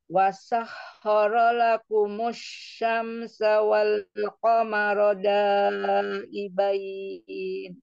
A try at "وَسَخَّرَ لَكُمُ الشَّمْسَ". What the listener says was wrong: Ro-nya sempurnakan ro fathahnya ya, dibuka dulu ro terbalik. Wasakhara lakumus ro la jangan langsung wasakhara lakumus gitu ya. Ro-nya ro dulu dibuka dulu. Tapi jangan diayun, hati-hati. Jangan juga diayun, nanti kepanjangan. Ya, dia bukan mad. Tapi maksudnya disempurnakan ismamul harokah fathahnya ya.